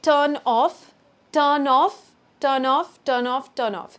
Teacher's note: Almost sounds like tur is a different word, noff is a different word. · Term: linking